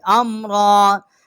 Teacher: فالمدبرات امرا، اور یہاں ہم وقف جو ہے وہ لازم کریں گے، کیونکہ آگے جو ہے جو دائرہ بنا ہوا ہے اس کے اوپر میم جو ہے یہ ہمیں نشانی دیتی ہے کہ یہاں پر وقف جو ہے لازم کرنا ہے، اور دال کو ہم نے با کے ساتھ مشدد کیا ہے، اور را جو ہے اس کے اوپر کھڑا زبر ہے، ایک الف جتنا جو ہے اس کی آواز بلند کی ہے